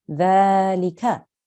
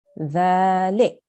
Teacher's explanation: But if you have to make a pause, you will pronounce it like this, dhalik. So your fatha has turned into a sukoon and you make a stop there